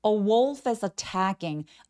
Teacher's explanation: wolf의 F와 그 뒤에 단어가 모음으로 시작하죠. 그러면 자연스럽게 연결해서 연음해 주세요.